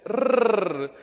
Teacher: However, when it comes to the r, that sound is not in our database. The rrr, the rolled r, does not exist in the English sound database